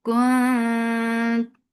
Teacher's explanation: As you will touch ikhfa, your lips should be in a straight position, and this ikhfa is light. Your tongue should be ready to say ta, and you're keeping the sound in your nose.